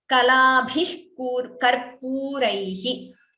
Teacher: So here Jihva Muliya and Bhi is Mahaprana.